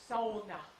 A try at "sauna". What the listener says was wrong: No, sauna. It has 3 syllables. Sauna.